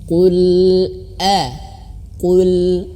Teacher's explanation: Sering sekali saya bahas tentang hamzah. Hamzah itu harus terputus suara ya.